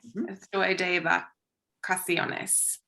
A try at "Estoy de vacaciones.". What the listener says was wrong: Muy bien.